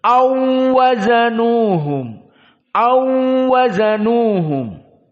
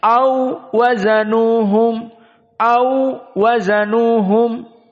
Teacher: Dan perkara yang kedua, au wazanuhum, maka qiraah dari Hafs dibaca waw sakinah saja, au wazanuhum. Adapun qiraah Wars digabungkan waw pertama dengan waw kedua dengan tasdid.